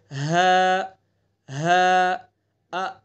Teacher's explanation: حمزہ ہا آخری سینے کی طرف سے ان کو ادا کریں گے